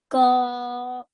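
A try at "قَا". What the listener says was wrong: Try and round your mouth a tiny bit more. Qa.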